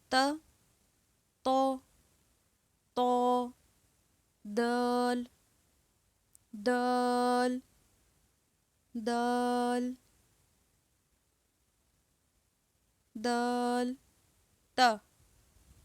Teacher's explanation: حروف نطاعیہ، زبان کی نوک جب اوپر سامنے والے دو دانتوں کی جڑ سے نکلے تو یہاں سے ادا ہوگا